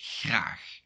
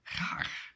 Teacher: in Belgium, the R will be more rolling